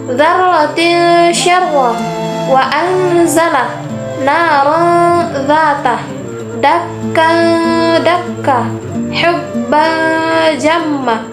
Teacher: suara nun sukun atau tanwin masih terdengar, namun terasa samar antara izhar dan idgham. Selain itu juga terus bersambung dengan huruf berikutnya sehingga terdengar seperti bunyi eng. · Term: ikhfa